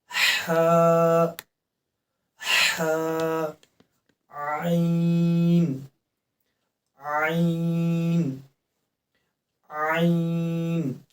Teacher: وسط حلق سے عین ادا ہوتا ہے اور ہا